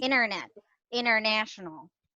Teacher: If it's between letter N and a vowel, the T is not there. It's poof, it's gone. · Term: Silent T